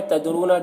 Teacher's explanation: ला तदरून ला में अलिफ मद्दा है, तदरून दाल में कलकला होगा और रॉ को यहाँ पर पूर पढ़ेंगे